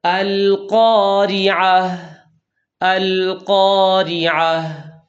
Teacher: لام ساکن کو ہلانا نہیں، لام کے اندر صفت انحراف ادا کرنی ہے